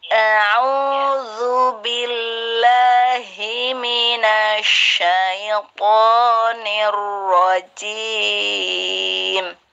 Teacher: Zal, ujung lidah keluar.